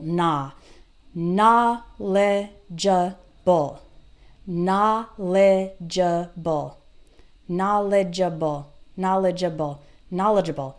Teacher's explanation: so for knowledgeable we have na lei ja Baal okay and the stress is on the first syllable